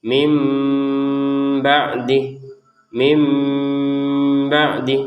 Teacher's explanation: ada unsur samarnya antara min sama ba ini sehingga terbacanya mim ba'dih